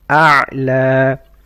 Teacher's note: عين from mid of the throat